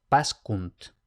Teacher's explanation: la secuencia de SC, por lo general va a ser SK